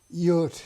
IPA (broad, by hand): jʊət